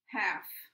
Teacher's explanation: ends with an [f] sound which is voiceless